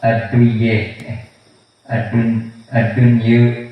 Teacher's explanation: dan ad-dunya dibaca at-taqlil, yaitu imalah sughra